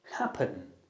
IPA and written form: 'hæpən (happen)